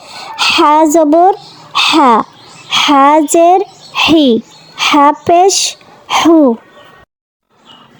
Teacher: লম্বা হা উচ্চারণের সময় গলায় শো শো শব্দ হবে। · লম্বা হা উচ্চারণ হবে হলকের মধ্যখান থেকে এবং একটু বাতাস বের করে দিতে হবে।